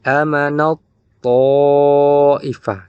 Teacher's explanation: karena ada tak sukun bertemu dengan huruf to, maka langsung dimasukkan amanat thaifah, seolah-olah tak ditiadakan. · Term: idgham mutajanisain